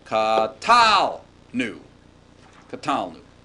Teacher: But when we get to the first person form, we have our katal with the accent away from the verbal suffix